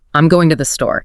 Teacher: We naturally hit going and store harder, making the other syllables less important. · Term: stress-timed